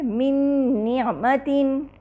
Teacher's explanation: مثال ہے من نعمتن، یہاں دیکھیے نون ساکنہ کے بعد نون متحرک آ رہا ہے، من نعمتن میں نون ساکنہ کے بعد نون متحرکہ ہے، چنانچہ من کا نون ساکنہ اپنے مخرج اور صفات سمیت نعمتن کے نون متحرکہ سے مل جاتا ہے، یعنی اس میں داخل ہو جاتا ہے۔